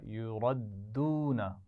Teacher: را کو بھی موٹا پڑھیں گے، دال پر شد ہے تو سختی سے پڑھا جائے گا